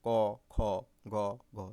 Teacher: দেখো ক খ গ ঘ, জোরে জোরে উচ্চারণ করো এবং তাহলে বুঝতে পারবা। ক খ গ ঘ, দেখো জিহ্বার গোড়াটা নরম তালুতে স্পর্শ করছে গলার মধ্যে, সেজন্য ওই জায়গাটাকে কণ্ঠ বলা হয়। ঠিক আছে, সে আবার জিহ্বা মূল বলা হয়, সেজন্য এই এই বর্ণগুলোকে কণ্ঠবর্ণ বলা হয়।